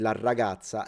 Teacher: even if I wanted to speak Italian with a Sicilian accent, I would say la ragazza and double the R in pronunciation. So a very strong R at the beginning of words is typical of a Sicilian accent.